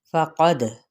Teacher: قاف پر ہے اور دال پہ قلقلہ ہوگا